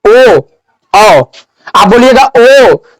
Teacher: तो देखिए आप बोलिए ओ औ, आप बोलिएगा ओ, तो देखिए ओष्ठ भी सिकुड़ रहा है और आवाज गला से डायरेक्ट निकल रहा है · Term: कंठोष्ठ